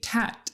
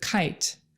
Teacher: the k sound is produced in the back of the mouth when the back of the tongue pushes off against the very back top of your mouth so for instance uh here's your mouth K is produced way